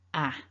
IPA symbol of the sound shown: æ